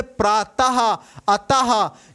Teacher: विसर्ग का उच्चारण करते समय हा की ध्वनि निकलती है